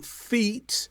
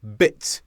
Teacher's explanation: without the dots for example feet but bit e and i e is a slightly longer sound than I and it's represented by those two dots